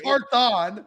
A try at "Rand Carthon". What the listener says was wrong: No, no, no. take the T. Like you're putting too much tongue in the thon. Rand Carthon. Rand Carthon.